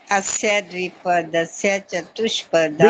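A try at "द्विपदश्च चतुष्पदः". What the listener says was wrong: द्विपदस्य नहीं है, द्विपदश। चतुष्पदाः। द्विपदश अलग अलग करेंगे ना तो गलती नहीं होगी। द्विपदश चतुष्पदाः।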